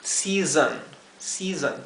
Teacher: la segunda s se pronuncia como la s zumbada o vibrada · la o se pronunciaría con un sonido intermedio entre lo que sería una o y una e season season traten de buscar un sonido intermedio entre esas dos